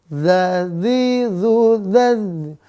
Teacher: lidah ujung gigi seri atas sifatnya dua tipis napas tertahan ingat kalau kita melafalkan dad maka enggak boleh ada udara yang keluar